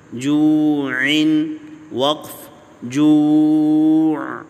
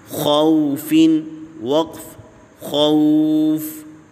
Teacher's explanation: جوع میں جو واو ہے واو مدہ ہے اس کو ایک الف کی مقدار لمبا کریں گے